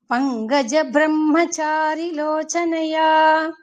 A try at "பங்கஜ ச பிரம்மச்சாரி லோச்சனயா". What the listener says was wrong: பங்கஜ ச பிரம்மச்சாரி. ஒரு சா இருக்கும், இருக்கா?